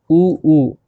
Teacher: होठ क्या हो रहा है, गोल हो जाते हैं ऊ बोलते समय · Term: ओष्ठ